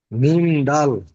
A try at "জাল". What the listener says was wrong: না, এটা জাল, দালের ওপরে একটা নোক্তা এসছে, জাল।